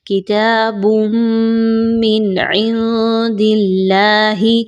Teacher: تو آپ نے ادغام میں کیا کرنا ہے کہ تنوین کی آواز کو میم کی آواز میں مکس کرنا ہے، مرج کرنا ہے غنے کے ساتھ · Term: ادغام مع الغنہ